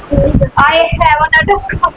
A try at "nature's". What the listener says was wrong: नेटर्स call. ये नेटर्स बोल रही थी. नेचर्स होता है नेचर्स. नेचर